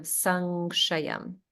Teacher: The only word where something was missing is this Sankshayam. It sounded like you were saying Sakshayam, but there's a nga sound.